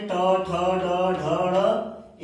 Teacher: ट वर्ग के जो वर्ण बोलते हैं ट, ठ, ड, ढ, ढ़, इनका भी उच्चारण करते हैं तो हमारी जिह्वा क्या करती है? मुड़ कर तालु को टच कर रही है। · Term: मूर्धा